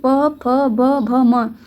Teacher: इसमें आपके होठ जो हैं वो चिपक रहे हैं आपस में, ठीक है। तो इसलिए इसका उच्चारण स्थान आपका ओष्ठ हो जाएगा। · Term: प वर्ग